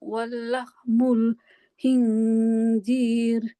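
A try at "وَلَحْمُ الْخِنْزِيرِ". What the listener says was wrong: Walahmul, bukan wallahmu. Walahmul khinziri. Makhraj kho di ujung tenggorokan, ya kan? Walahmul khi. Nah, yang kho dia di mana? Ujung. Bukan, yang pangkal hamzah dengan ha.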